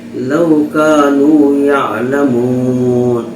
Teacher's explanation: لو کانوا یعلمون، لو میں جو واو ہے یہ واو لین ہے، اور واو لین کہتے ہیں واو ساکن سے پہلے جب زبر ہو تو واو لین ہوگا، اور واو لین کو نرم آواز کے ساتھ جلد پڑھیں گے